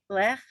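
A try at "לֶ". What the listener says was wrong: No, but what's this first one? Not, there's no ch on the end. Just le.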